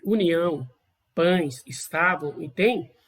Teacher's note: é possível perceber um pequeno sopro sobre os dedos. Isso indica uma nasalização. Quer dizer que parte desse som também é pelo nariz.